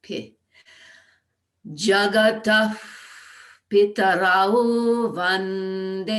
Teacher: I'm going to treat that Visarga as though I were blowing a feather. So it lands on the lips for Pitarao. P. Jagata Pitarao Vande.